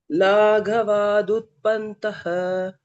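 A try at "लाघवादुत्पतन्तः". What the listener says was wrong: பந்தஹ இல்ல பதந்தஹ.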